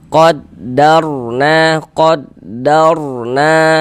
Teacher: dibaca tabkhim sehingganya pangkal lidah kita ya pangkal lisan kita itu naik terangkat ke atas ketika kita mengucapkannya ditebalkan huruf rnya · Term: dibaca tebal